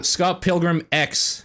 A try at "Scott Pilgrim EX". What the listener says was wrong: not pronounced X. It would be pronounced EX, right?